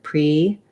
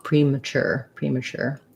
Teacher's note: we have a little bit of secondary stress on pre because we use the tense e sound here